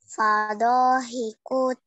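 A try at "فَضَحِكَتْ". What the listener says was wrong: Jangan dipanjangkan. Fadohikat. Fathah, tandanya fathah.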